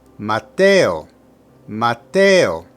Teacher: Put the emphasis on the second syllable